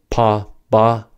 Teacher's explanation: For the pa, ba pair, the stop happens at the lips. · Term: plosives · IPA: /p, b/